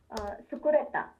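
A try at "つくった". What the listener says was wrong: ಒತ್ತಿ ಹೇಳಬೇಕಲ್ವ ಒತ್ತಿ ತಹಲ ಹೇಳಬೇಕು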